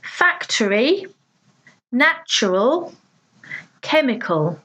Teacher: three syllables with the stress on the first